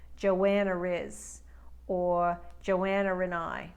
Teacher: when one word ends with a vow sound the next word begins with a vowel sound so a New Yorker might put an r in between those two words for flow as in Joanna RZ or Joanna Rai it doesn't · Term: intrusive R